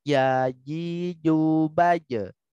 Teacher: jim, shin, dan ya ini sama ya di tengah-tengah lidah, ya di tengah-tengah lisan. Jadi tengah-tengah lisan bertemu dengan langit-langit bagian atas.